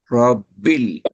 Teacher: র মুখটা সামান্য গোল হবে।